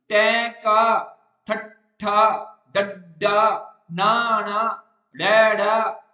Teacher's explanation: ਜੀਭ ਜਿਹੜੀ ਹੈਗੀ ਨਾ, ਉਹ ਪੁੱਠੀ ਹੋ ਕੇ ਸਖਤ ਤਾਲੂ ਨਾਲ ਲੱਗ ਜੂਗੀ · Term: ਉਲਟ ਜੀਭੀ